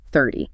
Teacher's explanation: the stress is at the start. It falls.